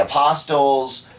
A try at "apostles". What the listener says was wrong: No, I think the T is silent. I think it's apostles.